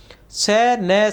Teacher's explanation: स न संस्कृत में दंत्य थे। हिंदी में वर्तस्य हो गए। वर्तस्य का अर्थ है मसूड़ा जिनका उच्चारण मसूड़ों से होता है।